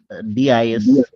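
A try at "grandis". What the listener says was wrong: উচ্চারণটা হবে কিন্তু ঘন দি, দিস হবে না, ঘন দি, গন্ধি।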